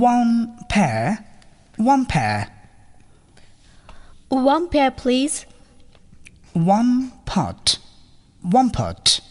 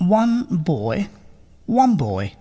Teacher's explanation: the last sound of the first word, that is N, will be pronounced as M